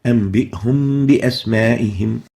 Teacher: both the Meem and Ba are both bilabial letters. They are articulated by bringing the two lips together. So both the Meem and Ba shares the same articulation point, which is the lips. · we move from the Meem oral articulation towards the Ba, resulting in hiding the Meem. And the symbol is a Meem written in green without haraka, and that's how it looks. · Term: Ikfaa, hiding of the Meem